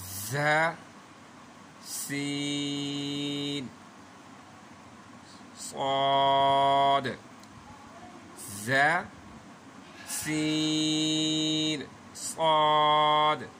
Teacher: ये बेटा ज़बान की नोक और सामने वाले दांतों के पीछे यानी जड़ से अदा होते हैं। तो ये हो गए नरम हरूफ, हरूफ़े लिस्विया और हरूफ़े सगीरिया, सीटी वाले हरूफ।